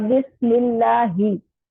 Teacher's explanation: ही की आवाज सीने की तरफ से आएगी